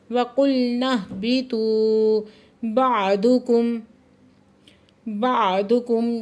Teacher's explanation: میم ساکن ہے جہاں پہ اظہار شفوی ہو رہا ہے.